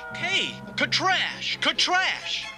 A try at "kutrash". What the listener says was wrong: No, no, roll your tongue. Kutrash!